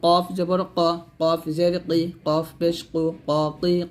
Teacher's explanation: কফ জিহ্বার গোড়া হতে মোটাভাবে আদায় করতে হবে